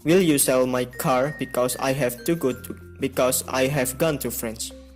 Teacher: The stressed words in that sentence are sell, car, gone, and France. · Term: sentence stress